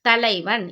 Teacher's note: சொல்லின் இடையிலும், சொல்லின் கடையிலும் இந்த ஐங்கிற எழுத்து வரும்போது உங்களுக்கு 1 மாத்திரை அளவு குறைந்து ஒலிக்கும் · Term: ஐகார குறுக்கம்